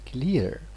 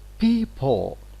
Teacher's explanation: so these two sounds belong to the same phoneme clear and dark l